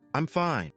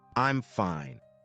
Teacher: But if you add a little rise and fall, I'm fine, it suddenly sounds warm and welcoming.